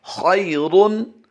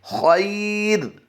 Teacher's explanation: خیرن را دو پیش رن کی آواز جب دیں گے تو یہ پر کی آواز آئے گی، لیکن جیسے ہی وقف کی حالت میں پڑھیں گے تو اس کی آواز باریک ہو جائے گی · بہت اہم کلیہ ہے یہ، پھر سمجھیے اس کو، خیرن، پھر پڑھ لیجئے خیرن، پھر پڑھ لیجئے لاسٹ ٹائم خیرن، اور وقف کی حالت میں را کو ہم نے باریک کرنا ہے